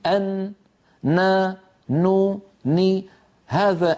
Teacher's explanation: لما يقول الواحد منا أن مجموع أمرين يشكل هذه النون: طرف اللسان يقرع ما يحاذيه من غار الحنك الأعلى، ويخرج غنة مع هذه القرعة من الخيشوم. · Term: حرف النون